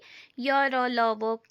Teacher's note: जीभ कहीं भी पूरी तरह से स्पर्श नहीं होती य, र, ल, व के उच्चारण करने में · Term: अर्ध स्वर